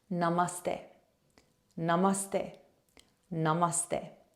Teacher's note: is less of a stay and more of a St okay so it's a slight th sound